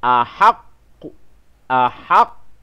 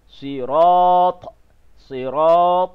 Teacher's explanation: huruf qalqalah, maka dia akanlah diberhentikan secara detakkan. Ada detakkan. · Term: qalqalah kubra